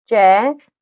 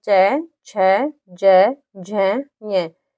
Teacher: तालव्य से बोला जाता है क्योंकि इसको बोल के देखो, उसका उच्चारण होता है चै। जब हमारी जीभ होती है वो ऊपर तालु में चिपक जाती है